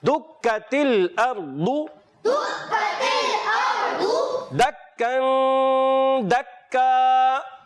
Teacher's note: کاف کو باریک رکھیں گے، مشدد حرف ہے، مشدد حرف ہمیشہ یاد رکھیے پیارے بچوں رک کر ادا کرتے ہیں